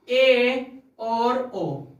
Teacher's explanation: जिन स्वरों के उच्चारण में मुख द्वार आधा बंद रहता है। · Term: अर्ध समृद्ध स्वर